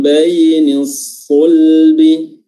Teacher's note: baini di sini ada ya yang mengandung sifat lin, ya, karena dia sukun didahului oleh huruf berharakat fathah